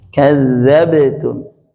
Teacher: Adapun sisanya 3 huruf ini, maka tipiskanlah dia, tipiskanlah. Jadi yang ba, jim sama dal bunyinya tipis. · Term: qalqalah